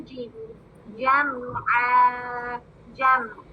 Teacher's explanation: اللسان کہاں لگے گی جیم کے لیے؟ جو وسط لسان یعنی زبان کا درمیانی حصہ حنک الاعلیٰ کے درمیانی حصے سے چپک جائے